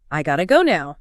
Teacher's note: It does, but gotta represents the true phonetic reality. It captures that alveolar flap, that soft D sound, which allows the phrase to be said with maximum speed.